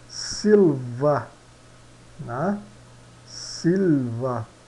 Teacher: observa-se que o i é mais longo na pronúncia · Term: I longo